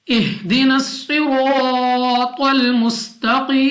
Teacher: स्वाद मुस्तालिया मोटा पड़ेगी, मुंह और आवाज को खोलकर।